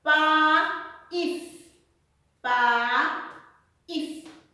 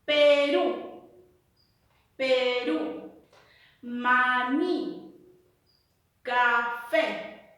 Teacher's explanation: la mayor fuerza de voz recae en la última sílaba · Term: palabra aguda